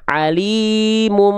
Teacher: Jangan lupa ditahan dua ha dua ha tahan dua ha dua harakat dua harakatnya dua harakat lambat ya kenap bang harus ditahan karena ketika kita melafalkan em itu ada dengung di sana bunyi mim kan bunyi dengung pasti masuk hidung nih